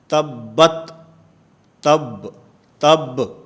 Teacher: تلاوت میں با ہے، اس با کے اوپر قلقلہ ہوتا ہے